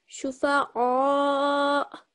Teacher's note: you hear that slight jerk at the end because the Hamza takes sukoon